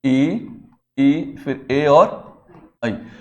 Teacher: जीभ का आगे वाला भाग ऊपर उठता है